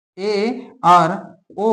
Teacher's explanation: तो जिन स्वरों के उच्चारण में मुंह द्वार आधा बंद रहता है। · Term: अर्ध संवृत स्वर